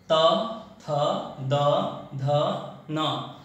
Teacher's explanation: त वर्ग में अपने जीभ को हम दांत पे स्पर्श करवाते हैं। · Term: दंत्य